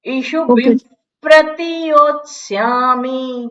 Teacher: વિસર્ગની પાછળ પ હોય, પકાર, પાર્થ, પ્રતિ, પ આવે એટલે વિસર્ગનો ફ થાય. પ્રતિ છે તો આપણે ફ ના ઉચ્ચારણ કરીએ.